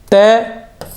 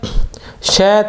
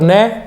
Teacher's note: कै कंठ्य, तय दंत्य, श तालु और न नासिका।